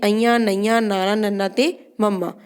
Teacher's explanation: ਅਨੁਨਾਸਕੀ ਜਦੋਂ ਅਸੀਂ ਇਹਨਾਂ ਦਾ ਉਚਾਰਨ ਕਰਦੇ ਹਾਂ ਤਾਂ ਆਵਾਜ਼ ਨੱਕ ਰਾਹੀਂ ਬਾਹਰ ਨਿਕਲਦੀ ਹੈ।